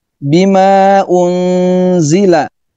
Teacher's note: maknya panjang, lebih dari 2 harakat, disebut dengan majaiz munfasil